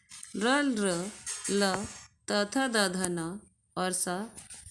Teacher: र ल त थ द ध न और स ये दंत से बोले जाते हैं